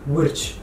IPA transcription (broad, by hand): writʃ